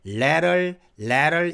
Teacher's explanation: 여기서 드 소리, 트 소리를 부드럽게 르 발음으로